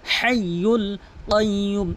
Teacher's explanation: হাইয়ুল বড় হা হলকের মাঝখান থেকে